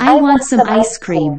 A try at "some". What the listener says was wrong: I want some ice cream. 자, 민준이 말하는 버릇 중에 스 소리를 혀를 물고 내는 경향이 있는데, 자, S가 내는 스 소리는 혀를 물고 내는 게 아니고 그냥 하는 거야. 그래서 이 녀석의 발음은 some.